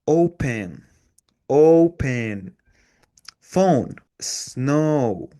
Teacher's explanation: First, start with an O sound. Second, slowly glide to a soft U sound. And finally, round your lips at the end. · And finally, round your lips at the end. Your mouth starts more open and ends more closed. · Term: diphthong